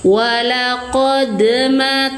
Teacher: Pantulkan suara dalnya. Qalah sugro walaqma tanpa terputus atau tanpa terjedah suara